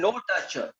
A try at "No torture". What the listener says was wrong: Louder. More authority.